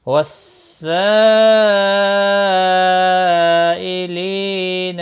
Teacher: مد متصل ہے، 4 الف کے برابر کھینچ کر پڑھیں گے۔